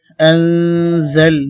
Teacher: নুন সাকিনের পরে জা আসছে, ইখফা গুন্না। জালাম জবর জাল, আনজাল, নুন খারা জোর না, এক আলিফ টানতে হবে, হা পেশ হো।